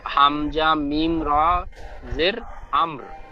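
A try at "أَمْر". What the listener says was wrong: হামজা মিম র জের নয়, এই জাবারটি হবে, হামজার উপরে যে জাবার ওই জাবার, হামজা মিম র জাবার,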